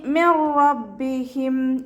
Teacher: മിർ റബ്ബിഹിം നൂൻ സാക്കിനയ്ക്ക് ശേഷം ഇതാം ബിലാഗുനയുടെ അക്ഷരമായിട്ടുള്ള റോ വന്നിട്ടുണ്ട്. നൂൻ സാക്കിനയെ റോയിലേക്ക് ലയിപ്പിക്കുന്നുണ്ട്, പക്ഷെ നമ്മൾ മണിക്കാതെ ഓതിക്കൊടുക്കുക.